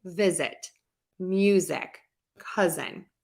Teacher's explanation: that sound with the z sound which is a consonant sound if we have the two vowels and your voice is already on for those vowels oftentimes we just keep the voice on for that letter s